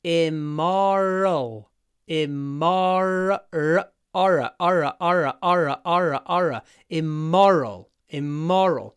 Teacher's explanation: What happens is we open our mouth, immo, then we raise the tip of our tongue to say r.